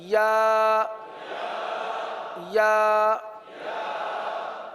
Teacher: जबान का दरमियान और तालू का दरमियान